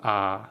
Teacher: तो खुला हुआ सर आ, देखिए जब आ बोलेंगे तो पूरा मुंह हमारा खुल जाएगा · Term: विपरीत